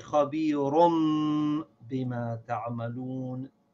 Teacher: you should read the noon sound of the tanween like a meme